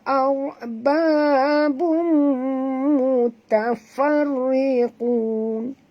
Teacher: Babum, ba dua harakat, bum tanwin baris dua depan bertemu dengan mim, kita kena dengung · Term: idgham al-ghunah